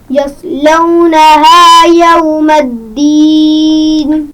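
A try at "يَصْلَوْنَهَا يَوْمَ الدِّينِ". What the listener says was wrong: یصلونہا صاد کی آواز کو واضح کیجئے. یصلونہا.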